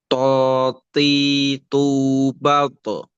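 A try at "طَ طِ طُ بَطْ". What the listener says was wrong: Nah, ketika batoknya juga, kolkolahnya masih seperti eh, lebih ke O. Nah, jadi dia tuh apa lebih mungkin karena memang to ini semua huruf yang seakan-akan o di bahasa Arab ini dia tidak meng-o ya, agak ke a. Makanya ketika mantul pun dia harusnya jangan kita vokalkan o gitu. Ya posisi mulutnya dia tidak ke o.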